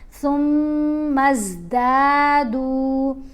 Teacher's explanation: دونوں دال لمبے کیے جائیں گے، دونوں کے ساتھ زبر کے ساتھ الف حرف مدہ ہے، پیش کے ساتھ واو ساکن